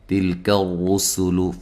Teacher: تا کو باریک پڑھیں گے، لام کو ہلانا نہیں ہے، کاف کو باریک پڑھیں گے، ٹھیک ہے۔ را کو موٹا ادا کرنا ہے، را کے اوپر پیش ہے۔